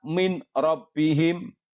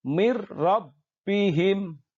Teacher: Dimasukkan nun matinya ke huruf depannya dengan tanpa mendengung. · Di situ karena ada nun mati bertemu dengan ro, maka ini harus dibaca sebagai hukum bacaan idgham bila gunnah. Kita masukkan, leburkan nun matinya ke huruf idgham bila gunnah yang di depannya, dalam hal ini ro.